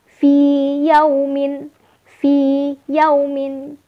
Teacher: tidak dibaca idgham, namun dibaca idhar ya, dibaca jelas. Itu adalah salah satu pengecualian dari idgham misli.